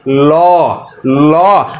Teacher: জিহ্বার যে মাথা রয়েছে সেটি কিন্তু উপরে যাতে মাড়ির সাথে লেগে যাবে, পাশাপাশি দেখবেন 2 দিকে যে ফাঁকা জায়গা আছে এখান দিয়ে বাতাস বের হয়ে যাবে। এই যে পাশ দিয়ে যে বাতাসটা বের হয়ে যাচ্ছে এ কারণে বলা হচ্ছে পার্শ্বিক ধ্বনি।